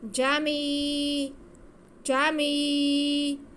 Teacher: جیم پہ زبر، میم کے نیچے زیر اور آگے یا ساکن، یا ساکن سے پہلے زیر ہے تو یا مدہ ہے، ہم میم کی آواز کو کھینچ کے پڑھیں گے